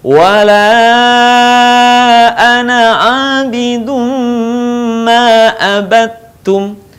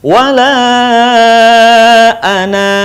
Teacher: ketika kita berhenti pada kata ana, maka suaranya memanjang